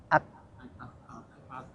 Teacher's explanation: Kaf itu agak di depan